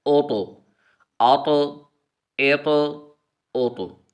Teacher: طا حرف قلقلہ میں سے ہے تو ہم نے طا پر حرف قلقلہ کرنا ہے